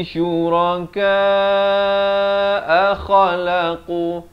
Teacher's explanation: kha ni hujung kerongkong, manakala qaf pula dipangkal lidah makhrajnya.